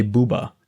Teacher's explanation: when we say buba our mouth is forced to be more rounded